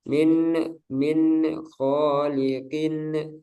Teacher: ada pantulan-pantulan ya pada nun sama tanwinnya